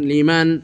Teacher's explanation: নুন সাকিনে উচ্চারণে কোনো ইখফার গুন্না এর মতো গুন্না নাই, এদগামের গুন্নার মতো গুন্না নাই, বরং সেটা এজহার হয়ে গেছে, স্পষ্ট হয়ে গেছে।